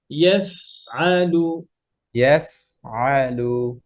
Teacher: ফা পড়ার সময় দেন, ফায়ের বাতাস বের করেন